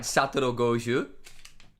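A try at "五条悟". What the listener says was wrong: It's not a soft J either. It's Gojo. Rather than Gojo. Goju. You said Goju.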